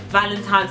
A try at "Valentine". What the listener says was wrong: Valentine, what? Valentine. You've been saying Valentine's. Valentine. At your age.